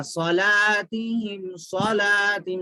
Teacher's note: صاد موٹا پڑھنا اور جلدی بھی پڑھنا ہے، حرکات ہے، زبر ہے.